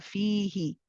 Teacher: The fi is prolonged for 2 counts because of the mad ya here.